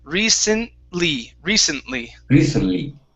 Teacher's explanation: in this word recently, the T is not going to be pronounced.